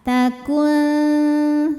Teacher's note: kemudian ada hukum ikhfa aqrab karena nun sukun menghadapi huruf Ta Maka nunnya dibunyikan samar-samar siap-siap menuju makhraj huruf ta